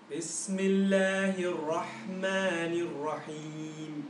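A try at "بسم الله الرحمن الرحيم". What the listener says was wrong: Just make sure the rah. Can you say rah? Because it's doing the, don't curl your mouth. Because the temptation is on heavy letters, on ra, to curl your mouth.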